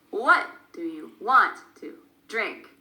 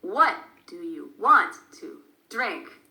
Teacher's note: We stress the question word, what, and we stress the verbs a bit, want and drink, and everything else becomes smaller, faster, and it's more difficult to hear.